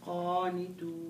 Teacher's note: تفخيم قا اسحبيها لجو لا تطلعيها بره على طول بسرعه قانت ايوه هك ايوه ممتاز وهو الذي يبدا